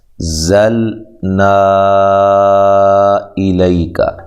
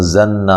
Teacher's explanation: لام اور نون جب اکٹھے آئیں گے نا تو ان دونوں کو الگ الگ واضح طور پہ کرنا ہے، آواز کے اندر واضح طور پہ فرق ہو۔ اکثر کیا ہوتا ہے اس میں غلطی کرتے ہیں، زنا بجتا ہے، زنا، زنا کی آواز محسوس ہوتی ہے۔